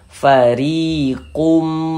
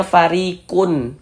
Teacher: Bunyi tanwinnya dimasukkan ke huruf mim, melebur ke huruf mim, sehingganya ini kita baca fariqum. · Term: gunnah